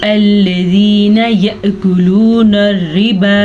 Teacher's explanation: या मद्दा खींच के पढ़ा जाता है और इसकी मिक़दार तकरीबन एक अलिफ के बराबर होती है या एक खड़ी ज़ेर के बराबर होती है।